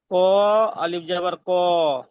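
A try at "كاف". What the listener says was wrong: ক নয় ভাই, কফ। কফ আলিফ জবর ক। কাফ আলিফ জবর কা।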